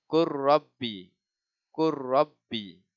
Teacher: Kita tak boleh baca kul rabbi. Terus baca qur rabbi. Idghamkan ke dalam huruf ra.